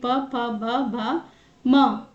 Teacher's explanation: प से म तक यानी कि प भ म प्लस में उ और बड़ी उ ओष्ठ यानी कि होठ। प वर्ग बिना दोनों होठों मिलाए नहीं बोला जा सकता। · प वर्ग बिना दोनों होठों मिलाए नहीं बोला जा सकता, बिना दोनों होठों को मिलाए नहीं बोला जा सकता, इसीलिए यह प वर्ग यानी कि ओष्ठ इनका उच्चारण स्थान है।